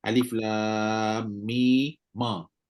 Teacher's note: Mim asalnya sukun. Sekarang ni kita kena hidupkan mim tu dengan baris fathah.